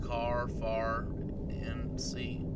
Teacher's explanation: We don't sound any final R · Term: New England accent